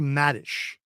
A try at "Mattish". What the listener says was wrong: Mattish? Mattish. You're saying Maddish with double D. I'm saying Maddish with double Mattish with double T.